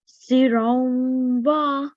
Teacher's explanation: there's tanween and there's wa. We do idgham with 2-second nasal sound.